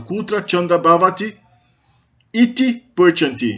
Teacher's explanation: o iti acaba se fundindo com o bhavati no final, formando um i longo, porque tem dois i's, é um i que junta com outro i.